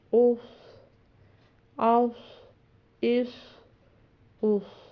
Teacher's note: صاد موٹا پڑھا جاتا تو ہم پڑھیں گے اس